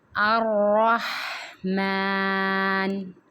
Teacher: را کی تشدید کو مضبوطی سے پڑھا جائے گا، ہا کو حلق سے ادا کیا جائے گا، اور میم کی جو کھڑی الف ہے اس کو ایک الف کی مقدار کھینچ کے پڑھا جائے گا۔